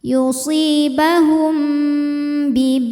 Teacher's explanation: Kemudian ada hukum ikhfa syafawi karena mim sukun menghadapi huruf ba, maka bunyi mimnya didengungkan dulu, tahan